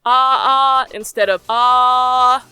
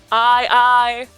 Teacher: the phrase i am you're almost always using a glottal stop it's the break between two vowels it's a break without silence it's just you tensing up your throat to differentiate the sounds